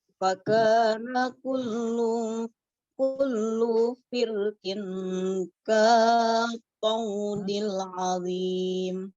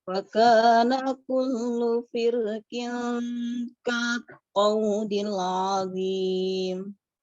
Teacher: huruf ro-nya dibaca dengan tebal, boleh juga dibaca dengan tipis